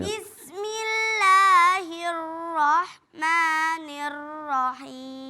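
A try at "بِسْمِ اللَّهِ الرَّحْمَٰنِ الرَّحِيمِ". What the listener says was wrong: Nah, yang terakhir ar-rahimnya masih belum, takrirnya masih ada. Ulang lagi. Jadi mohon diperhatikan, jangan sampai kemudian takrirnya berlebihan sehingga itu menimbulkan berlebihan dalam sifat takrir ro, ya.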